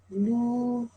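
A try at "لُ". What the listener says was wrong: Okay, don't round your mouth too much with these ones, okay?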